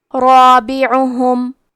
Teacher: را پہ زبر ہے تو یہاں را کا حکم ہے تفخیم، تو ہم یہ حرف کو موٹی آواز میں پڑھیں گے کیونکہ اس کے بعد مد الف ہے اور مد الف میں پیچھے والے حرف کا حکم لیتے ہیں تفخیم میں اور ترقیق میں، تو کیونکہ اس کے پہلے حرف را ہے تو ہمیں مد الف کو بھی بھاری آواز میں ادا کرنا ہے۔